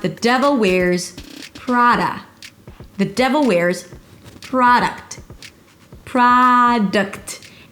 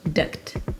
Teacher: The primary stress is on the first syllable PRAA. There is no O so it's not PRO-duct but an open ah sound PRAA-d'-ct'.